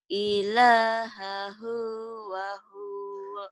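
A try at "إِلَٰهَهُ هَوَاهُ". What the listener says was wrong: Terbalik. Hawahu wahuwa. Hak dulu baru wa. Terbalik.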